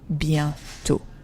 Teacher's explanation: Bientôt, you see, I don't pronounce the last T.